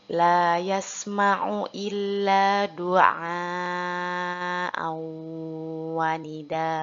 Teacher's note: huruf A yang diwakafkan harus kita baca 2 harokat karena merupakan mad wajib muttasil